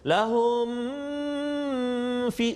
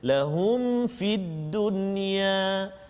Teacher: Dan juga satu lagi pada kalimah lahum fid dunya, juga ayat 114, lahum fid dunya tu mim mati bertemu dengan fa, izhar syafawi, jadi kita tak boleh dengung kat situ. Lahum fi, salah.